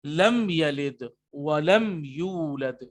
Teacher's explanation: لیکن میم ساکن کے بعد با اور میم نہیں ہے بلکہ یا ہے، تو میم ساکن کے بعد اب یا آنے کی صورت میں اظہار ہوگا.